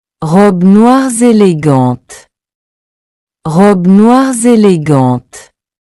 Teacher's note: they all sound the same, except noir, which adds a small Z sound in.